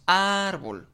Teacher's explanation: nos damos cuenta que ar, pues es la sílaba tónica. Por lo tanto, es la sílaba donde recae mayor fuerza.